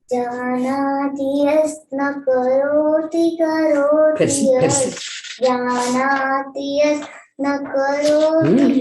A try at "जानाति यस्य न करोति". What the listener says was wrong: एक शब्द आप छोड़ जानाति यस्य